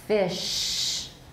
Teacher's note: The fricative at the beginning of fish is a little less loud, has a slightly smaller amplitude than the fricative at the end of the word.